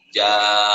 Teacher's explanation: Wa minha maqtabi'i ja itu mad iwad. Karena tidak dibaca jan, dibacanya dua harakat ja